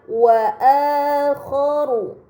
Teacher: terdapat Hamzah bertemu huruf mad ini dinamakan mad badal maka harus dibaca panjang selama dua harakat